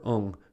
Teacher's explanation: the air is directed to the nose